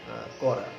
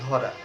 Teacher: তাহলে বয়বিন্দু র হচ্ছে দন্তমূলীয় ধ্বনি, যেটি কি করে জিহ্বার অগ্রভাগে দাঁতের সাথে উপরের দাঁতের সাথে আলতোভাবে টাচ করে র র বললে জিহ্বার অগ্রভাগটা উপরের দাঁতের কাছে থাকবে, সেখানে হালকা টাচ করে কিন্তু সে র উচ্চারণ করবে, র। · বয়বিন্দুর বয়বিন্দুর দন্তমূলীয় ধ্বনি, দন্তমূলীয় ধ্বনি, দাঁতের মূল থেকে টাচ করবে জিভটা। জিহ্বার অগ্রভাগ আলতোভাবে দন্ত স্পর্শ করে এই ধ্বনিটি উচ্চারিত হয়।